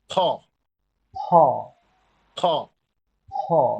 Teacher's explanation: দুই ঠোঁটের ভেজা, উপরের নিচের ঠোঁট ভেজা অংশটা লাগবে। বাতাস খ, দিয়ে, জোরে বাতাস দিয়ে খুলবে। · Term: ওষ্ঠবর্ণ